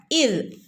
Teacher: നാവിന്റെ അറ്റം മുകളിലുള്ള പല്ലിന്റെ അറ്റത്തിൽ തട്ടണം